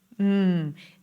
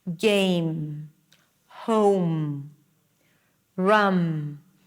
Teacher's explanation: you close your lips and you release air through the nose. M the lips have to touch each other.